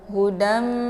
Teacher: Dimasukkan bunyi dalnya ke dalam bunyi mim serta membentuk suara yang mendengung. Hudam, cara bacanya ditahan dalnya sehingga membunyikan suara dan masuk ke huruf mim. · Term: idgham ma'al gunnah